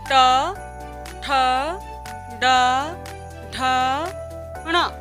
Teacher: हमारी जो जीभ का अगला हिस्सा है वो तालु के पीछे वाले हिस्से को छुएगा, मूर्धा को। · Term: मूर्धन्य व्यंजन